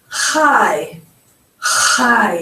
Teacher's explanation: Hear that ch sound at the back of your throat